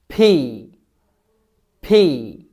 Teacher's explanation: দুই ঠোট একসাথে করে জোরে ধাক্কা দিবেন যাতে বাতাস বের হয়। যেমন আমি দেখাচ্ছি বাতাস যখন বের হবে তখন এটা কাপবে।